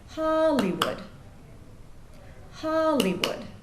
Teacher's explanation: there's three syllables there the stress is on the first syllable